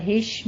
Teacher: ہش میں آپ نے شین پہ تفشی کی آواز لے کر آنی ہے